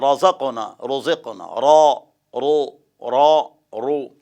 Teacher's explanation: را که زبر یا پیخ وي نو غټه به وي